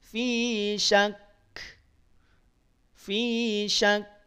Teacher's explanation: yuminu bilakhirati mu Min tekan ya idamkan dulu pada huruf Kaf tekan dulu pada huruf Kaf baru percikan nafasnya